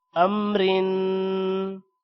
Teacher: اب یہاں پر را کے نیچے دو زیر ہے اور دو زیر کو تنوین بھی کہتے ہیں، تنوین کی وجہ سے غنہ ہوگا اور دو زیر کی وجہ سے را موٹی نہیں ہوگی